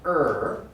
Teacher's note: it sounds a little bit like r but it's not exactly r it's an r we call it an r colored vowel it's an er and the symbol we use in an unstressed